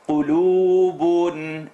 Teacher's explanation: The qaf is heavy, definitely, but the lam is light.